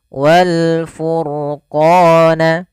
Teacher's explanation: pada lafal ro furqona ini rnya dibaca dengan tebal maka ini kita bisa katakan dengan ro tafkhim namanya